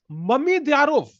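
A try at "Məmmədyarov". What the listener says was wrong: No, you're saying mummy. Mamydyarov.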